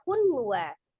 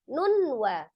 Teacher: Ditahan, ditekan, kemudian 2 sampai 3 harokat suaranya masukkan ke rongga hidung. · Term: idgham bi ghunnah